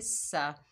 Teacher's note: सीन के ऊपर ज़बर है, बगैर खींचे पढ़ेंगे सा। सीन सख्ती और सीटी वाला हरूफ है, इसमें सख्ती आएगी, सीटी आएगी